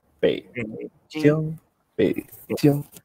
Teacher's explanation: third tone is bass voice. Just start your voice super low, like ba, super short. And Chinese people hear that as the third tone.